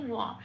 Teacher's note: তার কারণ 2 নম্বরে তালিকাভুক্ত করে দেওয়া আছে বয়ের উচ্চারণ সংস্কৃততে ও প্লাস অ, মুখটা খুলে বলতে হয় ওয়া